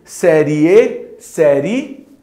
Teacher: Semivogal é fraco, vogal é forte, então ele é crescente. Uma vez que o som vai crescer, o som vai ficando mais forte. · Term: ditongo